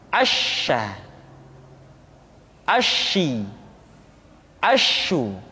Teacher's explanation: Sya dikeluarkan dengan cara mengangkat tengah lidah kita ke langit-langit · Dan sifat yang dimiliki oleh huruf sya yang paling nampak adalah apa yang disebut dengan sifat at-tafashi, yaitu menyebarnya angin di dalam mulut kita